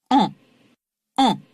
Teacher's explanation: Eh bien, il en va de même avec A, lèvres légèrement arrondies, bouche bien ouverte, et en, où, vous le sentez là aussi, le voile du palais s'abaisse et chasse une partie de l'air vers le nez.